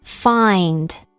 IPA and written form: faɪnd (find)